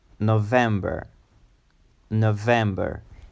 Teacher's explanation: it's a three syllable word and with the emphasis on the second syllable